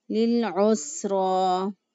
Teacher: عین کو وسط حلق سے ادا کیا